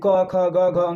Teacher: क वर्ग का उच्चारण स्थान कंठ होता है